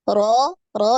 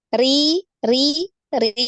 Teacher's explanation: ini harus harus beda bunyinya antara yang tebal dengan yang tipis ro ro ini tebal naik ya pangkal lidah ro Ri Ri Ri ini tipis ya tidak naik pangkal lidahnya tidak naik